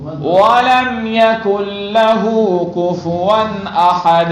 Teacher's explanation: کفون میں نون کو جھٹکا بھی نہیں دینا ہے اور غنہ بھی نہیں کرنا، کفون احد نہیں پڑھنا ہے.